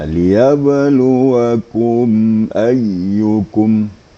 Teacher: Ini namanya kan izhar syafawi, ya. Izhar syafawi itu tidak gunnah, tidak dengungkan, tetapi hanya sekadar lewat saja, sekadar menjelaskan mim mati.